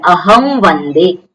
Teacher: જે અનુસ્વારનો જે વકાર થયો છે એ અનુનાસિક વકાર થયો છે અનુસ્વારના સ્થાને જે વકાર થયો છે વકાર કેવો છે એ અનુનાસિક થયો છે